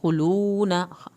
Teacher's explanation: खुलूना वाव साकिन को खींचें, नून की ज़बर को हरगिज़ लंबा नहीं करना